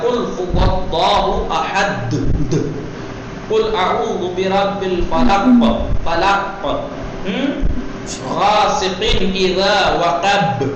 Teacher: اگر ہم قلقلے کی رعایت نہیں کریں گے تو حرف کی آواز وہیں قید ہو کے رہ جائے گی, سنائی نہیں دے گی. اس لیے قلقلہ یعنی ہلکی سی حرکت, معمولی سی حرکت اس کو دی جائے گی, قلقلہ کیا جائے گا.